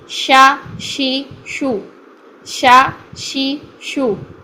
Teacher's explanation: آواز منہ میں پھیلنے کے لیے, اس کے سانس کو جاری رکھنے کے لیے ہم شین کا جو زبان کا درمیان ہے وہ اوپر پیلٹ کی طرف لے کر آئیں گے, ٹچنگ پوائنٹ پر رکھیں گے, پورا ٹچ نہیں کریں گے جیم کی طرح